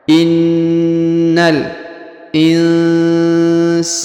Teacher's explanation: Perhatikan huruf nun sukun bertemu sa ya. Maka kaidahnya didengungkan dan disamarkan.